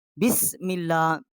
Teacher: میم جو ہے اس کو لام کے ساتھ ہم نے مشدد کیا ہے اور نرم پڑھا ہے